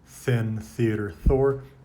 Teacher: The voiceless interdental fricative, the sound of th in thin, theater, thor